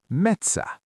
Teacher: It has an Ä—a light, front vowel.